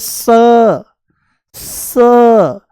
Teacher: ये दंत्य सकार है। दांतों से बोला जाता है